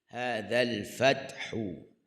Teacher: Dua-dua buka mulut, lepas tu hujung lidah kena letak di hujung gigi atas bagi huruf zal